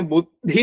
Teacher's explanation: പിന്നെ ബുദ്ധി തത്വം, ബുദ്ധി അവിടെ ദ് ഇ ആണ്. ആദ്യത്തത് മൃദു, രണ്ടാമത്തത് ഘോഷം